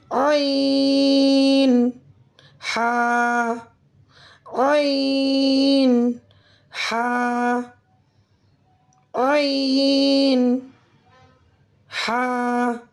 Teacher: ادا ہوتے ہیں درمیانی حلق سے جو ہمارے حلق کے بالکل درمیان میں جگہ ہے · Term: حروف حلقی